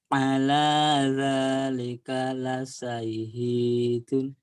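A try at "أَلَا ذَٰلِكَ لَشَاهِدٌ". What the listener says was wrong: Ala ala dzalika lasyahidun. Tinggal shinnya hutang kamu ya. La sya. Hutang shin.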